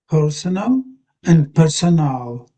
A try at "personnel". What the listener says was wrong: You I think you sound like you're doing this one fairly well. But when you're doing the top one, you're sort of in the middle between the two.